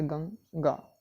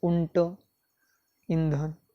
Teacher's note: आता उदाहरणार्थ पाहू, जसं की अनुस्वारमध्ये गंगा, गंगा शब्दामध्ये पाहिला तर जो अनुस्वार आहे त्याचा न सारखा उच्चार होताना दिसतोय